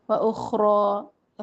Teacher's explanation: و اخرى خا موٹا حرف ہے، را کو بھی موٹا پڑھیں گے